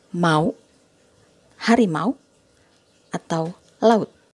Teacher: diftong au, yang pelafalan bunyi a-nya lebih jelas dibandingkan pelafalan bunyi u-nya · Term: Diftong turun